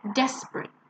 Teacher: last one desperate remember again it's not a it's a and we stress the first one desperate